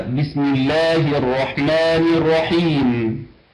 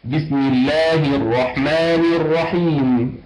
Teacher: نحقق الكسرات الثلاث في الميم وفي اللام وفي الهاء وفي النون